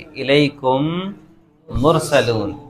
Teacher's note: میم کو میم سے ملا کر کیا کریں گے؟ غنہ کریں گے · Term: ادغام شفوی